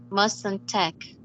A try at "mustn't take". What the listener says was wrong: All right. Very good.